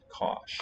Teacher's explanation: Here the letter I, we say palatalizes or slenderizes the S, changes it from a S to a sh.